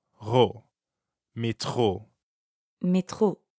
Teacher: the French R is in the middle of métro, so it sounds like you're clearing your throat.